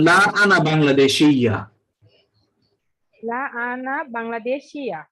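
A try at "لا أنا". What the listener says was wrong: পুরো টান দেওয়া যাবে না, আ কে কোনো টান নাই।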